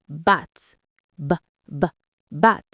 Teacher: feel that buzz? That little buzz in your throat? That is a voiced sound.